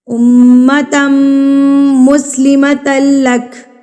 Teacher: میم مشدد پر غنہ کریں گے. غنہ میم کی آواز کو ناک میں ایک حرکت کے برابر رو کے رکھ رہے ہیں